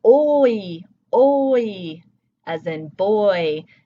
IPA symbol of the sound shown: ɔɪ